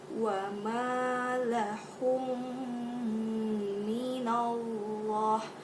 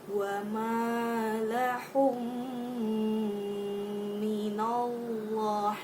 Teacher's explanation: Cara bacanya itu kan mim sukunnya itu dimasukkan ke mimnya lalu bacanya didengungkan. Nah, seperti ini, mim mati bertemu dengan huruf ma. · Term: idgham mimi